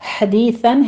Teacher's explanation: ہا کی ساؤنڈ لانی ہے، آگے واو مدہ ہے، حدیثاً ہے، ہا کو وسط حلق سے ادا کرتے ہوئے آگے یا مدہ ادا کریں گے